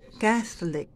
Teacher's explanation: Soft TH. Pinalalabas po yung hangin. Hindi hinaharangan. Hinahayaang lumabas.